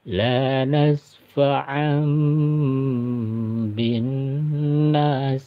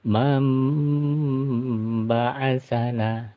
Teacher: iqlab cara bacanya dipanjangkan dua harakat ya kemudian ee tanwinnya atau Nun matinya berubah menjadi huruf mim